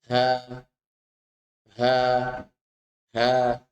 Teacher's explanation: H keluar ketika dua pita suara sedikit mengembang.